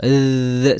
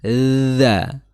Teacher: di ujung lidah bertemu dengan ujung gigi seri atas. Nah, kalau kita gampangnya menggunakan bahasa kalau dal itu sedikit tegas, kalau dal itu sedikit lunak ya seperti itu. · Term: dalal